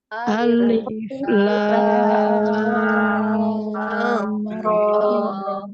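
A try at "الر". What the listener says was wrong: Nah, coba dikurangin lamnya. Alif, alif. Nah, berarti ada tasydidnya. Tidak ada tasydidnya.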